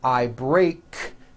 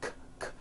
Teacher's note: Break ends with an unvoiced K sound. K, k. There's no voicing on that K.